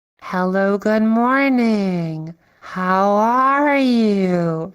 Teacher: you can kind of like start low, go high, and then go low again